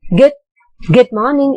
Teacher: good is in the rising tone again high pitch from there you come to the low pitch which is morning